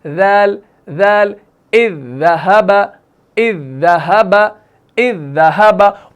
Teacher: जुबान का जो नोक है, जुबान की जो सिर्रा है वो कहाँ लगता है? ऊपर वाले यानी सनाया उलिया के किनारों से लगता है।